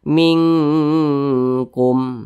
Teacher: ikhfa Hakiki ab'ad jadi cara bacanya itu disamarkan kemudian juga didengungkan karena dia ikhfa Hakiki ab'ad maka dengungnya dia lebih tinggi jadi lebih condong berbunyi Eng minkkum nah seperti itu didengungkan ditahan dulu atau dipanjangkan suaranya kira-kira